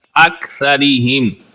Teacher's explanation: اکثریہم، کاف کو بھی درست پڑھیں گے، کاف کو باریک آواز میں صفت حمز کے ساتھ